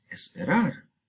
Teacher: se inserta una e al principio y tenemos esperar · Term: prótesis